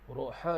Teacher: Huruf ha di sini makhrajnya adalah di tengah kerongkong. Jadi ha ni kita panggilnya ha pedas.